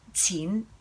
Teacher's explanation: So qin is that mid-rising.